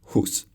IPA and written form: hus (Hus)